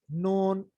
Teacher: नून में क्या है, जबान का किनारा ऊपर वाले दांतों के मसूड़े से मिलेगा